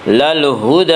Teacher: علینا للہدی، دال کے اوپر کھڑا زبر ہے، کھڑا زبر کو 1 الف کے برابر کھینچ کر پڑھیں گے